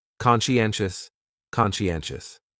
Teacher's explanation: conscientious has 4 syllables, and the stress is on that third syllable